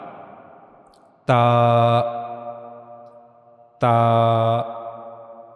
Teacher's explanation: we have to connect the tip of tongue to the upper incisors gum